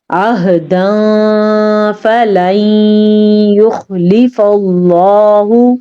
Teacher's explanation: عین کو ظاہر کرنا ہے، ہا کو بھی ظاہر کر کے پڑھنا ہے سینے سے